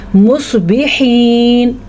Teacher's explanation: ہا کے بعد جو یا آ رہا ہے تو ہم اس کو لمبا کر کے پڑھیں گے کیونکہ یہ یا مدہ ہے. یا مدہ میں پچھلے حرف کو کھینچ کے پڑھتے ہیں.